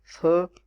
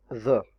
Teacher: these are considered dental in English, so we need to pronounce these two sounds with the involvement of teeth. So simply touch tip of your tongue with your upper teeth और फिर इनको pronounce करें तो आपके लिए दोनों sound जो है वो डेंटल बन जाएंगी।